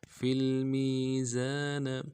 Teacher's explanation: زا کے بعد الف مدہ ہے، ایک مقدار میں کھینچیں گے